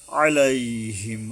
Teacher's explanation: আইন গলা চেপে আদায় করতে হবে।